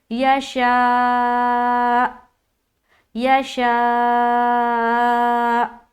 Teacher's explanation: हमज़ा साकिना का हल्का सा झटका हो जाएगा